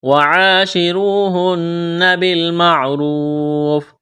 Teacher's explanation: را کو موٹا کرنا ہے، واو ساکن سے پہلے پیش ہے، واو مدہ ہے، الف کے برابر کھینچنا ہے، وقف کریں گے، فا کو ساکن کریں گے